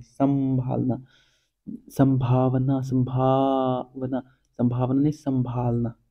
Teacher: देखो तुम बोल बोल के देखोगे तो तुम ऐसा लगेगा कि थोड़ा सा नाक से हवा आ रही है शुरू में और फिर बाद में मुंह से हवा आ रही है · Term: अनुनासिक